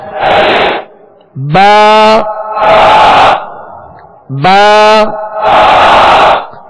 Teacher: با کا جو مخرج ہے دونوں ہونٹوں کے تر حصے سے یہ ادا ہوتا ہے ، دونوں ہونٹوں کے تر حصے سے ادا ہوتا ہے، با،